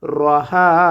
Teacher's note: রটা এখানে পুর করে পড়ব, হা এক আলিফ টান হবে